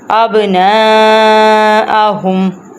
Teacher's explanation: اب نون کے اوپر ہے مد، تو اس لیے ہم نے نون کو لمبا کرنا ہے۔